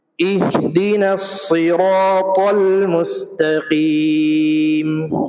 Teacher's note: المستقیم. اس آیت میں اہدنا الصی، وہاں پہ صاد ہے، اور صاد جو ہے یہ وہ حرف ہے جس کو پر کر کے پڑھتے ہیں، پر مطلب موٹا کر کے پڑھتے ہیں ، جب صاد پڑھیں گے تو منہ بھر کے پڑھیں گے،